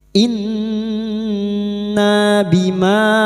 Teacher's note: ada mat lagi yang bertemu dengan hamzah di lain kalimat, mat jaiz munfasil, 5 harokat kita panjangkan